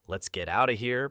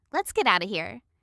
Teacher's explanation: And you often drop the of. Many native speakers say, "Let's get out of here." Because out of becomes out ofa in fast speech.